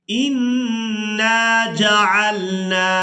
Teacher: नून मुशद्दद पर गुन्ना किया जाएगा और यहाँ पर हमने नून को अलिफ मद्दा की वजह से खींच कर अदा करना है।